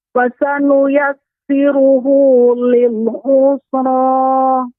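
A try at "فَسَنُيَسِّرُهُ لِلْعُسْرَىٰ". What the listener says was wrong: Lil usra, tidak mulutnya tidak tertutup. Usra tidak, akan tapi usra. Lil usra.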